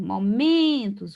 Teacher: Momentos, o men é a sílaba mais forte, então a paroxítona